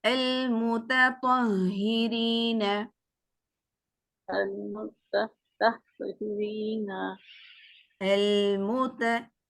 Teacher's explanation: ता को बारीक और तो को पुर कीजिए